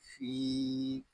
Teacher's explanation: فا کو ایک الف تک کھینچ کر پڑھیں گے کیونکہ یہاں یا مدہ ہو رہا ہے